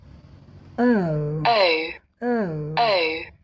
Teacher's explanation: यह अ से उ की तरफ जाती है।